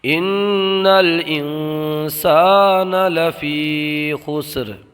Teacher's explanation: یہاں یا میں مدہ ہوگا، یا ساکن سے پہلے زیر ہے، یا وقف میں را کو ساکن کر دیں گے، خسرین سے خسر کر دیں گے